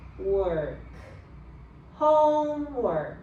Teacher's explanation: OR here, it's pronounced as ER. It's unstressed.